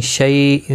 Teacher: اقفا حقیقی ہوگا اور گنہ کے ساتھ پڑھیں گے. شہید ہی یا مدہ ہے، ایک الف کی مقدار کے برابر کھینچ کر پڑھیں گے اور وقف کی صورت میں 2 زبر کو بدل کر ایک زبر کے ساتھ وقف کریں گے.